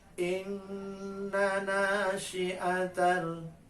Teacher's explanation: ada 2 inna, yang satu pendek tapi bertasdid, yang satu panjang tapi tidak bertasdid